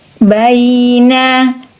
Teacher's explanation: Huruf ya sukun bunyinya i. Ada sifat rohwa di huruf ya, mengalir suara, alirkan suara i.